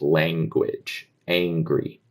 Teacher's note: There I just do a ah. And before an NG, it often becomes almost an A sound